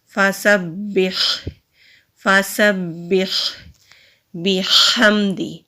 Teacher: با کو مضبوطی سے ادا کریں گے کیونکہ با کے اوپر تشدید ہے، آگے ہا ساکن ہے، ہا حلق سے ادا کریں گے تو پڑھا جائے گا فَسَبِّحْ فَسَبِّحْ بِحَمْدِ۔